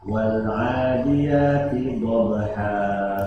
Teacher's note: Dha mempunyai makhraj di bagian sisi lidah. Ya. Dan ini hanya dha yang boleh kedua-duanya, artinya sisi lidahnya boleh atau salah satunya saja.